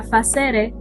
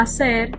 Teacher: la F inicial latina desapareció en castellano